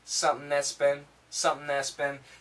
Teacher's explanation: S cancels the T.